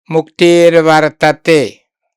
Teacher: Visarga is hard, Va is soft. Visarga is sorda, la Va is sonora. So you replace Visarga with R. It's a rule of combination.